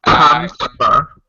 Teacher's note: we kind of dropped the middle syllable.